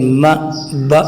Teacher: دونوں ہونٹوں کو ملانے سے ما، با ادا ہو جائے گا